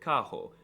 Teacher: The R is very often pronounced as an H, like in the word carro.